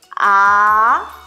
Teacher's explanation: Thanh 2 thì sao nhỉ? Âm vực nó có chiều hướng đi lên đúng không? Âm thanh chúng ta sẽ đọc từ dưới lên trên nhé.